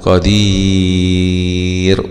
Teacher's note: ضمتين رون قادير، أقف عليها مد عارض للسكون قادير، وبرضو هنا بنقف على الراء مرققة لأنها جاءت بعد حرف ياء